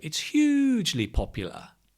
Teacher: with that stress on the adverb